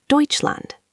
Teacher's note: The AU in Deutschland makes an oi sound, like in boy, and the SCH is like SH in shoe.